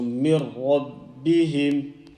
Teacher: when we do join noon sakin ra, we are going to join, and also we are not going to make a strong nasal sound. There is no nasal sound here. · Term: complete joining